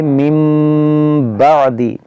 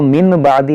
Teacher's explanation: यहाँ पर चौथा कायदा है, यानी इक़लाब होगा। नून साकिन और तनवीन के बाद जब भी बा आए तो वहाँ पर इक़लाब होगा, यानी उस नून साकिन को मीम से बदल कर पढ़ेंगे। इसको पढ़ेंगे मिम बादी, इसको मिन बादी नहीं पढ़ेंगे बल्कि मिम बादी।